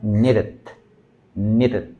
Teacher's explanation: Cuando intentamos hacer la r, ¿no? como R, no tiene que ser un golpe como que seco, un aleteo seco